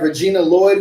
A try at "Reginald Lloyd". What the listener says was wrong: That's Reginald Lloyd. You said Regina.